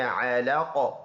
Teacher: من علق، من آواز ناک میں نہیں لے کے جائیں گے، علقن ہے، اسٹاپ کریں گے، دونوں زیر سائلنٹ، اور اس میں قلقلہ کریں گے